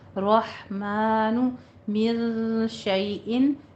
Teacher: رحمان میں روک پر پڑھتے ہوئے ہا وسط حلق سے ادا کرنا ہے